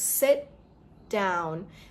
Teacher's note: when I bring my tongue down, I bring it down with the duh sound, not the t sound